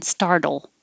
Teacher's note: My tongue's going up to the TD position, which is the same as the L position. So to make the L heard, you have to quickly release it from the D and put it back up for the L.